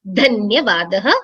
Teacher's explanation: dhakara is mahaprana. So we need to kind of give a little more stress on dhanyavadaha.